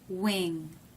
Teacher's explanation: You see a good bit of the tongue with the tongue tip down. That means the tongue is up in the back, so it must be the NG.